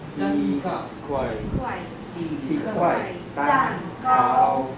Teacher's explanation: 一 块 蛋 糕 is fourth tone, and 一 块 is always fourth tone.